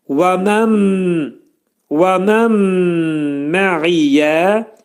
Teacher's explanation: Burada və mən mə'iyyədə nun hərfi mimə yetişir, idğam mə'al-ğunnə olur. Nun hərfi mimə çevrilir və burunda sıxılır. Və mən mə'iyyə, ayn hərfi boğazın ortasından çıxarılır.